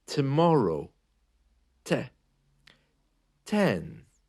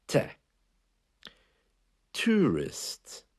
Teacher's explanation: the letter T has a very slight catch of air just after it